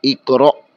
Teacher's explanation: بعض لوگ اقرأ ہا بنا دیتے ہیں، ہا نہیں پڑھنا، خالی تھوڑا سا حمزہ ساکن کو واضح کرنا ہے، ہا نہیں